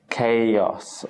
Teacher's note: we move from the long a sound to the short o sound